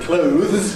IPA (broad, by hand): kləʊðz